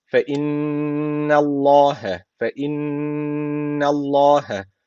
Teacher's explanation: Allah lafzı kalın okunacak neden kalın okunuyor Çünkü öncesindeki harfin harekesi üstte yani öncesindeki harf üstten bağlanmış Dolayısıyla Allah lafzı kalın okunacak tutmayı